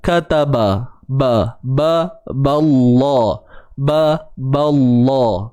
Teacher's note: kataba, ba tu kita kekalkan bunyi dia. Jangan ikut sekali tebal.